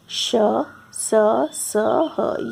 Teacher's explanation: Next is ऊष्म व्यंजन। जिन व्यंजनों का उच्चारण करते समय श्वास मुख में से रगड़ खाकर निकलती है तथा ऊष्मा मतलब होता है गर्म, अर्थात गर्मी पैदा करती है, वे ऊष्म व्यंजन कहलाती है।